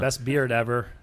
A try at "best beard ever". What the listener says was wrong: so you just dropped the D